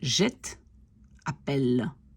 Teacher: Quand je dis je jette, je n'entends quasiment pas le dernier E. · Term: E muet